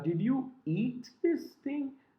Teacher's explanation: I'm placing emphasis on the word eat.